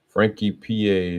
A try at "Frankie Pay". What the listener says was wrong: Actually, the E is silent. That's why it's